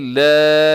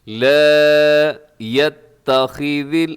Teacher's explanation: سب سے پہلے لا، اس کو لمبا کیجیے گا کیونکہ الف مدہ ہے، الف سے پہلے زبر، الف مدہ لمبا کر کے